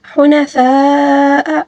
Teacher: اب یہاں پر مد لازم ہے، ٹھیک ہے، اس کو تقریباً 5 الف کے برابر کھینچ کر پڑھنا ہوگا